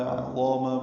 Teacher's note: کنّا، کن میں نون مشدد پہ غنہ ہے، نا الف مدہ ہے، دو حرکات لمبا ہے. عظامہ میں عین وسط حلق سے ادا ہوگا، ضا پر پڑھیں گے، الف مدہ ہے، دو حرکات لمبا ہے.